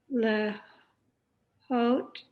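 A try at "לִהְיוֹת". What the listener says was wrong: It's got a vowel under the lamed. Li hiyot. Li hiyot. It's kind of a weird word. Li hiyot. But I think most people say li hiyot. It's hard to put the hey in there. Li hiyot.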